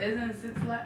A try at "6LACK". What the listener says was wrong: No, it's Black. You know people be earthy. Black is earthy. He puts a 6, but it's really a B.